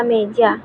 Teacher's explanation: e seperti pada kata meja lidah berada sedikit di belakang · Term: vokal depan